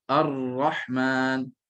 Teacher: Maknanya bunyi ra itu akan keluar pada hujung lidah. Lidah akan cenderung sedikit kepada makhraj huruf lam dan bunyi akan keluar pada tengah-tengah. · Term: inhiraf